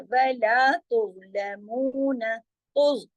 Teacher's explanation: तुज आराम से नहीं पढ़ना है, मोटा पढ़ना है और जमाओं के साथ पढ़ना है, हिलाना नहीं है